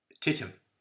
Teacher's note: in some speakers it's actually identical to English T, which is an alveolar T. The alveolar ridge, if you stick your finger on the gum ridge out of which your teeth come, that's the alveolar ridge.